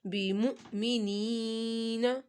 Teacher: حمزہ ساکن ہے تو اس کو ہم نے جھٹکا تھوڑا سا لگانا ہے